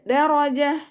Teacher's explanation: റ ഫത്തഹ ആണല്ലോ അപ്പോ ഉയർത്തിയിട്ട് ഉച്ചരിക്കുക റ എന്നുള്ള സൗണ്ട് കൊടുക്കുക മലയാളത്തിൽ നമ്മൾ റ എന്ന് പറയുന്നതുപോലെ പറയരുത് ദറജ